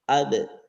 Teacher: hanya sa ketika Qalqalah ketika Qalqalah huruf-huruf Qalqalah ba ini karena sifat ba Ini adalah pertama adalah jahr jahr itu berarti tidak mengalirkan napas yang kedua syiddah syiddah itu dalam sisi suara diucapkan agak lantang